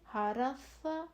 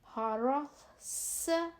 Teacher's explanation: پہلے س نرمی سے حرس, دوسرا سیٹی والی آواز حرس, پھر صاد موٹا حرس سو حرسو. اس طرح سے ہم تینوں ث سین صاد ان تینوں کے آوازوں میں ہم نے دیکھا کہ کیا فرق ہے.